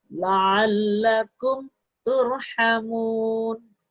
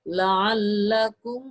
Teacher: Jadi mim sukunnya itu dibaca jelas, bukan samar. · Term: idhar syafawi